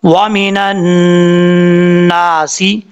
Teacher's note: نون کے آگے الف ہے, نون کے اوپر شد ہے, غنہ کریں گے, آگے الف ہے, ایک الف کی مقدار لمبا کریں گے.